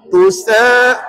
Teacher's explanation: Qita tu bila wakaf jadi qalqalah kubra lah.